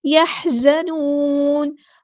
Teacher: ہاں کو مستحلق یعنی مڈل تھروٹ سے ادا کرنا ہے. زا کو سختی سے ادا کرنا ہے, باریک لائٹ لیٹر ہے.